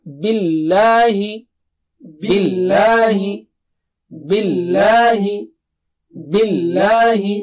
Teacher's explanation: यहां पर लाम को मोटा मत कीजिए इस ये बिल्लाह नहीं है राइट लाम को नॉर्मल पढ़ना है